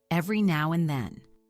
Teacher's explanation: The D in and often gets reduced or dropped every now and then.